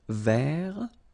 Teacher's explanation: masculine form, you don't pronounce the final T